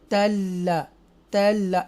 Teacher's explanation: आगे ये जो ये ता है ज़बर वाला, ये लाम मुशद्दा के साथ मिलेगा यहाँ पर, ओके। एक्स्ट्रा स्ट्रेस के साथ हम इस लाम मुशद्दा को पढ़ेंगे